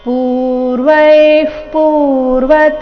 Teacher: ವಿಸರ್ಗದ ಉಚ್ಚಾರಣೆ ಅರ್ಧ ಪ ರೀತಿ ಮುಂದಿನ ಶಬ್ದ ಪ ದಿಂದ ಶುರುವಾದ ಕಾರಣ